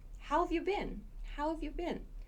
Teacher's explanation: So this how have you been, we reduce this part right here. So this how have becomes how've, and this y-o-u sounds like yeah.